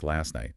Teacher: last night often loses the hard T on last, so it sounds more like last night.